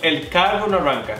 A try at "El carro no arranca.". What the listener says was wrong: No, es que es como que pronuncias mucho la R. Es como, el carro no arranca.